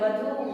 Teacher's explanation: अब देखिए इसमें दीर्घ ऊ है, वधू में आपका दीर्घ ऊ होता है, बोलते समय दीर्घ ऊ आता है, ज्यादा देर तक बोलते हैं